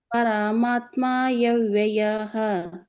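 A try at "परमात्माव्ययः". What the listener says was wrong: ಇಲ್ಲ ಇಲ್ಲ ನೋಡಿ ಅಲ್ಲಿ ಮ ಬಿಡ್ತಾ ಇದ್ದೀರಾ ಪರಮಾತ್ಮಯಂ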